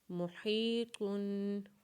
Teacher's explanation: میم کے اوپر پیش پڑیں گے، ہا کو یا کے ساتھ ملائیں گے اور طا کے اوپر جب 2 پیش پڑیں گے یعنی تنوین پڑیں گے تو اس کے اوپر غنہ کریں گے، اور اس حرف کو وقف کے بعد جب پڑھیں گے تو طا کے اوپر قلقلہ کریں گے، کیونکہ وقف کے بعد طا کے اوپر جزم آ جائے گا، اور طا کے اوپر جب جزم آتا ہے تو اسے قلقلہ کے ساتھ پڑھتے ہیں۔